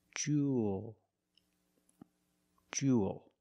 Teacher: You have the long oo sound plus the dark L. There's no extra vowel.